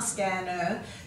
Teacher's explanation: In scanner, you've got the ER at the end. We quite often give that a schwa sound, so just be aware that it is ER, scanner.